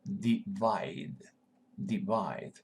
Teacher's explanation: this combination are and Big E I I wide divide divide accent is on the second syllable